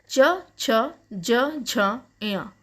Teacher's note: तो इकार, चवर्ग, यकार और शकार, इनका उच्चारण स्थान तालु है, इसीलिए ये तालव्य कहलाते हैं।